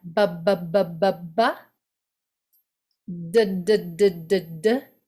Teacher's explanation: those are all voiced meaning the larynx is working and vibrating and buzzing when you say those consonants